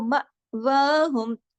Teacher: اس کی فرق میں آپ کو دوبارہ بتا رہی ہوں کہ یہ الف نہیں ہے، آپ اس کی شکل دیکھ رہی ہوں گی نا، اس کے اوپر آپ دیکھیے جزم ہے، جب بھی الف پر زبر ہو، اس کے نیچے زیر ہو، پیش ہو یا جزم ہو، وہ حمزہ پڑھا جاتا ہے، اور حمزہ جھٹکے سے پڑھا جاتا ہے